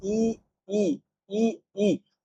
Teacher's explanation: ई और ई है, ये मुख के अग्र भाग, अग्र स्वर है